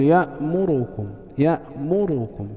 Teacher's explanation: ففي نحو يأمركم يسرع في أداء الضمة في الراء مثلا، فيقول يأمركم يأمركم، فلا تكاد تسمع الراء تامة وإنما ناقصة في حركتها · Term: الاختلاس